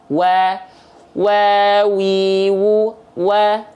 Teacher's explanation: wau itu dilafalkan maju bibirnya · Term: huruf wau